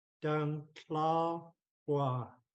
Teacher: I'm trying to keep Gua low tone.